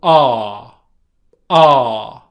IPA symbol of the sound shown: ɑː